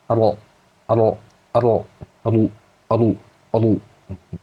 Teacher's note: kalau tanda bacanya fathah dan dhammah, itu takrirnya 1 kali aja.